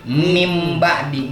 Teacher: Nah, ini kan min ba'di tulisannya, tapi dibacanya mim ba'di. Nunnya dia dibalik menjadi mim.